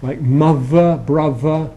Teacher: Instead of being a dental sound, it becomes a labiodental sound, so it moves forward. That's why we call it fronting. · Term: TH fronting